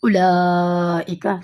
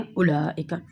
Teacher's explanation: واؤ کی آواز بالکل نہیں ہے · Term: واؤ معدولہ